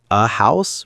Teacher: But for words like a house, we use uh because we pronounce the H.